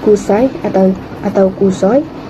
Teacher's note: Perkataan Kusoi mengandungi dion AI yang gabungan vokal O dan I yang dilepaskan sebagai satu unit bunyi kusai atau atau kusoi dalam dialek Mari Sarawak.